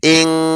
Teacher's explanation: ناک میں آواز لے کے جائیں گے ایک الف کی مقدار